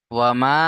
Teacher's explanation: আলিফ টান দেবেন আলিফ মাদ্দা রয়েছে প্লাস এখানে দেখেন মাদ রয়েছে মাদের পরে হামজা দ্বিতীয় শব্দে বা ভিন্ন রূপে এসছে তাই মাদ্দে মুনফাসিল তাই না মাদ মুনফাসিলকে দুই থেকে তিন আলিফ টান দিতে হয়